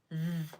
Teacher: Th has a voiceless sound, where your tongue goes between your teeth and you blow only air, and a voiced sound where your tongue goes between your teeth, but your vocal cords are used so it vibrates